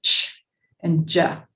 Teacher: a sound where the air is stopped and then pushed through a constriction so it sounds sort of like a a fricative but the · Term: affricates